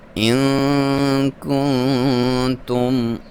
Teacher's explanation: نون ساکن پہ آپ نے اخفا کرنا ہے، ناک میں سے آواز نکالنی ہے